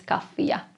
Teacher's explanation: one f but it actually sounds as if there were two letters f in this word